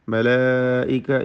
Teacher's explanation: മലായിക ഇതിലെ ദീർഘം മദ് മുത്തസിൽ വാജിബാണ്. നിർബന്ധമായും 4-5 ഹറക്കത്തിൻ്റെ അളവിൽ അലിഫിനെ ദീർഘിപ്പിക്കണം. ഈ പദത്തിൽ 2 ദീർഘങ്ങളുണ്ട്.